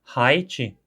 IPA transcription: hajt͡ʃi